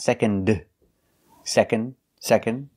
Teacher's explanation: we don't really pronounce the d